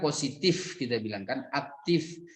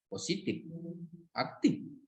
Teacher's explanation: Tapi dalam praktek di lapangan mayoritas kita itu tidak mengucapkan F sebenarnya kan. Jadi P juga dia itu.